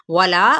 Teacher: वाव होंठों के ना तमाम गुलाई से